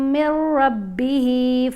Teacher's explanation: جب ہم نے میم کو را سے ملانا ہے تو یہاں پر غنہ نہیں کریں گے